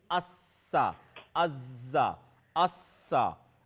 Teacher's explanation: So basically, Za, Sin and Saad, all three letters articulated from between the tip of the tongue and between the plates of the two top incisors.